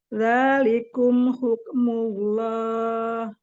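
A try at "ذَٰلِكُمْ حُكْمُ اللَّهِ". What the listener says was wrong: Tebalkan ismul jalalahnya. Dzalikum hukmullah.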